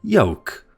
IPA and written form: jəʊk (yolk)